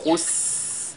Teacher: la lettre Sin également est lue avec Al-Hams